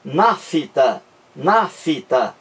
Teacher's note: Quem pronuncia nafta, parece que surge um I entre o F e o T.